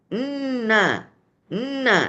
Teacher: jadi yang sedikit n itu adalah gunahnya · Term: ghunah anqas